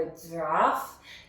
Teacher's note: it's not quite, that strong affricate, that j, it's not quite there. So I use his neck as well to teach the kids that they have to stretch that sound out of their mouth.